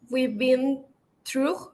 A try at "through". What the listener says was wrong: Yes, no es through que termina en G, no hay G, termina en la U.